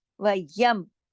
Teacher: मीम पे जज़म है तो जमाना है, हिलाना नहीं है